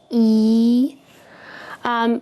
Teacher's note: because it is a long vowel so you can expect it to be twice as long as the E in the word beep in English